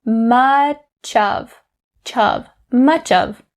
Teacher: So the first part of it is the connecting between much and of. You take that ch and connect it to of. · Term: connecting sounds